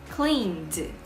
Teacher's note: Faz as cordas vibrarem, então no passado vai ficar cleaned, com som de D.